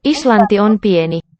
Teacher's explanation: Note that it's a voiceless T, even though Iceland, in all the Germanic languages, it keeps a D letter there.